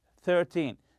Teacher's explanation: When counting teen numbers such as 13 and 14, stress the first syllable.